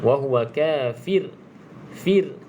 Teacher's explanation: ro bacaan ra sebelumnya huruf berbaris di bawah kita kena baca nipislah wahua Fir Fir macam mana nak baca Nif nipis kena senyumkan